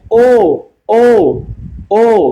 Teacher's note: গোল হলে হয় সংবৃত, কিন্তু এটা একটু কম গোল হয় তুলনামূলকভাবে, উ এর চাইতে এটা একটু কম গোল হয় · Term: অর্ধ সংবৃত